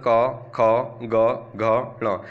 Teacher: ये कंठ से बोला जाता है अगर हम इनको उच्चारण करेंगे तो कंठ यानी गले से इसके बाद ध्वनि निकलेगी